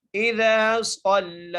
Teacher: صاد کو موٹا کر کے اور لام کے اوپر کھڑی زبر ہے، کھڑی زبر ادا کریں گے، ایک الف مقدار کھینچ کے پڑھیں گے لام کو